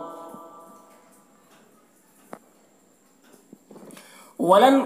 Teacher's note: ولن نون میں اخفا ہوگا، نون کی آواز کو ناک میں چھپا کر پڑھیں گے